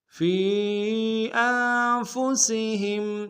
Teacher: ثم لا یجدوا فی انفسہم، فی انفسہم، فی میں فا کو یا کے سامنے لائیں گے، یا مدہ، اور یا مدہ کے اوپر مد منفصل ہے، کم سے کم دو الف دال بھی کھینچیں گے